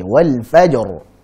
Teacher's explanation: karena jim qalqalah jadi langsung pantulkan saja